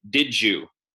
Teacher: Where the final D of did turns into a J, because the Y is a palatal sound,